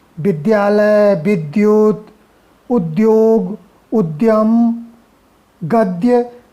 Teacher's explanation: इसमें आधा दा और या होता है, धा और या नहीं होता है।